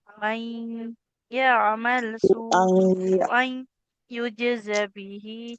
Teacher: Tanwin ketemu ya, dileburkan ke huruf ya-nya Ibu.